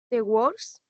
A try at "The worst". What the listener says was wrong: The worst. Bien.